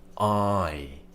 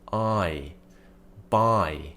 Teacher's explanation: we're starting with the tongue at the bottom of the mouth. Ah. Then we're lifting the tongue up during the whole sound. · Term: diphthong